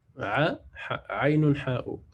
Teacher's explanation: on va sentir au milieu de la gorge, en fait, là où ça va frotter, c'est a et ha.